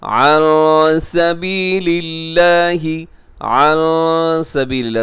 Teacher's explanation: نون ساکنی بعد سین ہے تو یہاں پہ اخفا ہوگا، اور اخفا کا مطلب ہے آواز کو ناک میں چھپانا۔ عن سبیل اللہ، لفظ اللہ باریک ہے کیونکہ لفظ اللہ کے لام سے پہلے پھر جو لام ہے وہ اس کے نیچے ایک زیر ہے، تو اس لیے ہم اس کو لفظ اللہ کو یہاں پہ ہم باریک پڑھیں گے، اس کے ہم موٹا نہیں پڑھیں گے۔